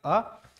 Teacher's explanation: एक ऐसा वर्ण है जिसका उच्चारण जीभ के मध्य भाग से होता है, इसीलिए इसको हम कहेंगे मध्य स्वर, अब वो है आपका अ।